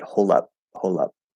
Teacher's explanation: the d disappears and we can actually connect the l instead